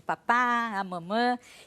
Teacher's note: são os primeiros sons que a criança consegue porque são sons bilabiais